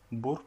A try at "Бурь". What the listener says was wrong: Бурь, порыв мятежный. Бурь. Alors, faut bien, là encore, tu as un signe mou, donc faut mouiller le R. Faut mettre R. Бурь. Бурь. En fait, toi, tu as dit bourr, et alors qu'il faut dire бурь. Бурь. Бурь.